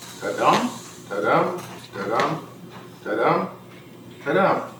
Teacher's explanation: 5 metrical feet, each consisting of one unstressed syllable followed by one stressed syllable. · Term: iambic pentameter